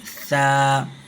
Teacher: زبان کا کنارہ سامنے کے جو دانت ہے ان کے کنارے پر لگائیں، تو اس طریقے سے سا ادا ہوتی ہے